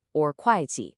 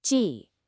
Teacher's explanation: it's two fourth tones, one right after the other. That means two sharp falling sounds. You really have to give each one a little bit of punch.